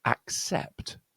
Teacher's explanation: You'll see how this is one of these words where the double C is actually represents two sounds. One is k and one is s.